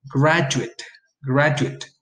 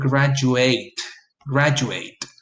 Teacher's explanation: In adjectives and nouns, the ate suffix is reduced to it. Be very careful here. But in verbs, the ate suffix is pronounced ate. Of course, this results in a longer syllable in the case of the verb.